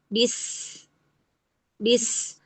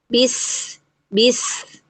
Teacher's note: Perhatikan bahwa suara tajam itu muncul dari rongga sempit antara gigi seri bawah dan gigi seri atas ya. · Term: saofir, sifat sofir